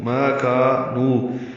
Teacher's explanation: ما کا الف مدہ، نو واو مدہ، 2 حرکات لمبا کریں گے